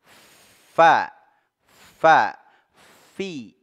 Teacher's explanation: ujung gigi seri atas ya menyentuh ujung dua gigi seri atas Fa Ya disertai dengan adanya aliran udara dia punya sifat hams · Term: huruf Fa